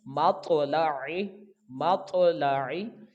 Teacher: تو طا ساکن ہوگا تو یہ حروف قلقلہ ہے، تو اس کو جنبش کے ساتھ پڑھیں گے، آواز لوٹ کر آئے گی · میم کو طا کے ساتھ ملائیں گے تو اس کو جنبش کے ساتھ پڑھیں گے، لام اور عین کو جلدی پڑھیں گے، لام کے اوپر بھی زبر ہے اور عین کے نیچے زیر ہے، عین کی آواز کا آپ نے خیال رکھنا ہے، اس کو حمزہ کی آواز میں تبدیل نہیں کرنا